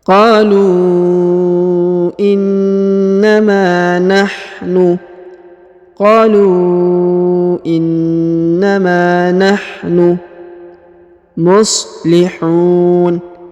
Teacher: huruf na ditahan dan ditekan karena terdapat tanda tasdid. Lalu huruf ma dipanjangkan 2 harokat karena di depannya terdapat alif.